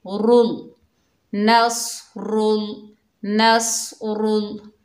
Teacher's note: अल्लाह के लाम को मोटा पढ़ेंगे और रॉ को भी मोटा पढ़ेंगे।